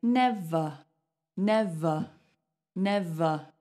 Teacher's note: So in standard English, when you have a word that is more than one syllable and it ends in an ER, so you go consonant ER, that is going to be a schwa. Now, a schwa sound is a completely neutral sound.